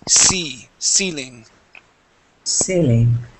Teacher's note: it's going to be a long E sound. Okay, just like a Spanish I. So instead of saying selling, it is ceiling.